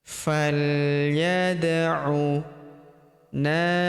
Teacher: Huruf da berharokat sukun kita pantulkan atau kita qalqalahkan